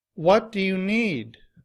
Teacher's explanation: here the stress is placed on the word what and need. It's louder, it's longer, and the pitch of my voice is just a little bit higher.